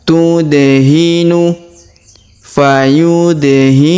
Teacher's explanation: sedangkan alifnya tidak dibaca atau tidak dianggap di sini ya waduru huruf da berharakat sukun maka kita pantulkan atau kita qalqalahkan